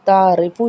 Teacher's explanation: را کو باریک پڑھا جائے گا کیونکہ را کے نیچے زیر ہے